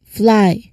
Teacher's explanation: So, it's a transition from that fricative air sounds to the L.